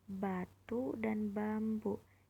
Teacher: Diucapkan hampir sama dengan P tetapi dengan getaran pita suara. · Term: fonem B